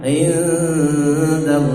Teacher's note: in dan mati ketemu dal itu ikhfa. Ya, samar dan dengungnya lebih lama.